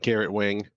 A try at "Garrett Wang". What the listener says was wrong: It's pronounced Wong. Wong. Those are different words. It's spelled with an A. It's pronounced with like an O.